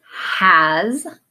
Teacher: Notice both has and his have that voiced S sound, so it sounds like a z.